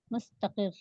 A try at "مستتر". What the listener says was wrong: نہیں، مستقل نہیں، مستتر، تا پہلے تا پر زبر، دوسرے پر زیر، مستتر۔